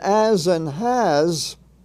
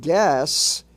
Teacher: the S is pronounced in its soft sound its soft form almost like Z